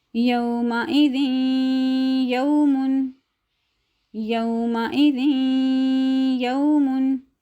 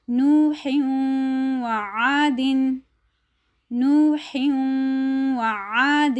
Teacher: تو یہ تنوین اور نون ساکن کے بعد جب حروف یا میم واو نون آ جائیں گے تو ہم ان کو مدغم کر کے پڑھیں گے اور اس کے اوپر غنہ کریں گے